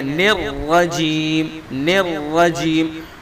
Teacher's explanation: را کو پر کریں گے، ہوٹوں کو گول نہیں کریں گے، بلکہ ہوٹ اپنی حالت پر رہیں گے